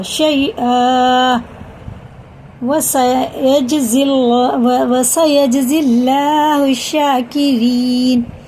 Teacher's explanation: اللہ کا لام زیر سے ہے، باریک پڑھیں گے، اور را بھی زیر سے ہے، باریک پڑھیں گے.